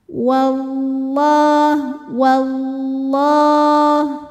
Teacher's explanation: tapi tidak ada suara w-nya jadi bukan wawah bibirnya tidak usah ikut maju ya · lam berbaris fathah berdiri maka lam kita panjangkan dua harakat saja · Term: lam jalalah, Mad Thobi'i muqaddar